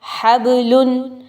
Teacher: با حروف قلقلہ میں سے ہے، قطب جد میں سے ہے، با کو ہم نے ہلا کے پڑھا